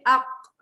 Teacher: Dia macam kat kerongkong sikit. Dia sebenarnya pangkal lidah. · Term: huruf qaf